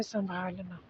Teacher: तो यहाँ अनुनासिकता है। अनुनासिकता यानी मुख और नाक दोनों का प्रयोग है संभालना में।